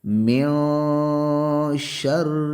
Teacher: مد اصلی ہے، نون پہ یہاں پہ غنہ ہوگا، من شر یہاں من کے نون پہ اخفا ہوگا ، اس لیے کہ نون ساکن کے بعد اور تنوین کے